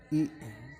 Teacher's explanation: vokal depan tinggi tak bundar